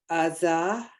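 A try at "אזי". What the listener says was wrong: Azai. Remember, we're pronouncing the yud. Azai.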